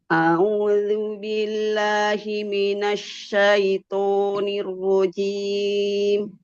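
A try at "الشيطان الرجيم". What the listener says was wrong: Syaitonir rajim. Jangan terlalu monyong, Bu. Syaitonir rajim. Syaitonir rajim.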